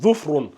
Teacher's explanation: donc le zou en mordant la langue.